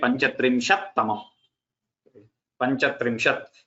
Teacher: this ikara goes away, and you get Panchatrimshat Tamam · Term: double takara